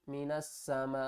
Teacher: یہ بڑی مد ہے، اس کو ہم مد متصل کہتے ہیں، اس کو ہم نے 5 الف کی مقدار کھینچ کر پڑھنا ہے۔